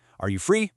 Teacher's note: For a yes or no question, it goes up.